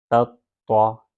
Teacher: پہلا تا لائٹ دوسرا طا ہیوی پڑھنا ہے